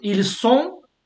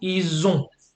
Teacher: This is how you tell they are and they have apart in French. By the S or the Z sound · So when you have this ONT and you do the joining, it sounds like a Z